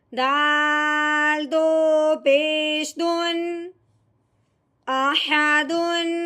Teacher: یہاں پہ ہم نے جب دیکھا کہ حمزہ ہے، یہ حمزہ حروف ہلکی میں سے ہے، اب ہم نے تنوین پہ غنہ نہیں کرنا، بغیر غنے کے اظہار کے ساتھ پڑھیں گے